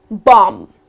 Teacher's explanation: you are gonna skip pronouncing the last b it's not gonna be bomb but it's just gonna be bomb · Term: last b goes silent